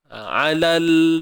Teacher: Huruf lam pegang makhraj lam betul-betul. Sebab dia bukan sifat lantun. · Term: sifat tawassut